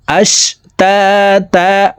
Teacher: দুই জবর থাকলে এক জবর সরিয়ে ফেলে বাকি এক জবর রেখে এক আলিফ টেনিয়া পড়িতে হয় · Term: মধ্যে ইওয়াজ